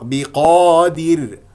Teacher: سوف نقف على راء ساكنه قبلها مكسور تكون مرقق